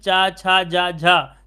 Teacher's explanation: तो जीभ आपके तालू की स्पर्श कर रही है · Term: तालव्य